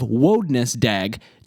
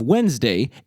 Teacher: The pronunciation of Wodnesdaeg differs from the pronunciation of Wednesday in two obvious ways. First, the initial vowel sound in Wodnesdaeg is an O sound, not an E sound